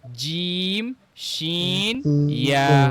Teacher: জিহ্বার মধ্যখান তার বরাবর উপরে তালুর সঙ্গে লাগবে · জিব্বার মধ্যখান, হ্যাঁ, জিব্বার যে মাঝখান আছে, জিব্বার মধ্যখান তার বরাবর উপরে তালুর সঙ্গে লাগবে আর কি। উপরের যে অংশ উপরের সঙ্গে লেগে উচ্চারিত হবে, বেশ চাপ দিয়ে। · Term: ৬ নাম্বার মাখরাজ